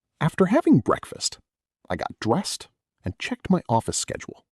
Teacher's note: Let your voice rise slightly on dressed and drop gently on schedule.